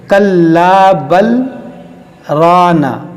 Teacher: سکتہ کے معنی ہوتا ہے آواز روک کر سانس لیے بغیر آگے پڑھنے کو سکتہ کہتے ہیں. یعنی ہم یہاں پر آواز روکیں گے مگر سانس نہیں توڑیں گے. کلا بل رانا، دیکھیے سانس ہم نے نہیں توڑا، صرف ہم نے آواز روکا ہے.